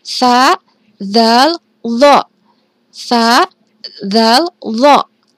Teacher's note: Ini keluar dari ujung lidah bertepatan dengan gigi seri atas. Nih, ujung lidahnya nempel sedikit di sini.